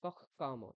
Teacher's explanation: আপনি যেখানে ক এর পরে বিসর্গ তারপরে ক, ওখানে খ উচ্চারণ করছেন